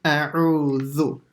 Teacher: the a has to come out from the bottom of the throat, then the ayn from the middle of the throat